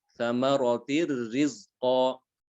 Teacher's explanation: hanya ditasdidkan saja ya, tanpa disertai dengan dengung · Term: tanpa dengung